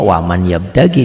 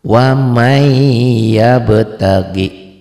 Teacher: Ini yang dikatakan tulisan dan bacaan berbeda. Ditulisnya kan ada bunyi nun matinya, dibacanya tuh N-nya hilang dilebur sama Y. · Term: idgham